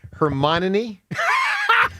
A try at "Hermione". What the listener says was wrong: You're adding an extra N in there. not